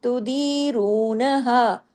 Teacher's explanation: تو دی، دال یا زیر دی، 2 حرکات، اور را واو پیش رو. دی کو باریک 2 حرکات، رو کو ہیوی 2 حرکات